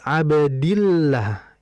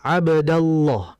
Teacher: Begitupun kalau fathah Abdallah. Nah, kalau kasrah dibaca la, tipis.